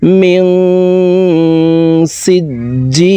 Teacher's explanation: জি এখানে 3 আলিফ টেনে লামকে সাকিন করে ফেলবো, কারণ মদার হরফের বামের হরফে ওয়াকফ হইলে মধ্যে আরজি 3 আলিফ টানিয়া পড়িতে হয়।